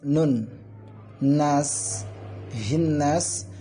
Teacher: nunnya ini syaddah, jadi dibaca dengung ya, atau idgham wa ghunnah. Kemudian panjangnya dari nun tersebut, nas, panjangnya dari nun ini, kalimat nun ini kan bisa dibaca 2 alif atau 3 alif, 4 harakat atau 6 harakat.